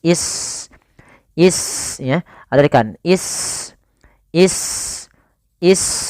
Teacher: Sin itu punya sifat HAM yaitu mengalirnya nafas